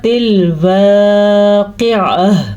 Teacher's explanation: پھر سے موٹا قاف اور عین کو تلفظ کے ساتھ پڑھنا ہے۔ یہاں پہ ہمارے پاس حالت وقف ہے، وقف کا نشان ہے، آیت کی ختم ہونے کا نشان ہے۔